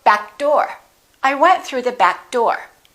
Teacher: Don't release that k, just go back door.